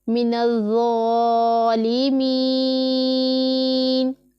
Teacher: ذا میں بھی ہم سیٹی کی آواز نہیں نکالیں گے، ذا بھی حروف مستعلیہ میں سے ہے، پر پڑھا جانے والا حرف ہے، اس لیے ہم اسے پر پڑھیں گے۔